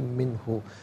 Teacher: منہ میں نون ساکن ہے، اس کے بعد ہا حرف حلقی آ رہا ہے، تو نون ساکن کو اظہار کے ساتھ پڑھا جائے گا